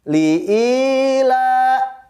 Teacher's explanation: Di ayat 1. Li'ila, i-nya dibaca panjang. Hukumnya adalah mat tabi'i.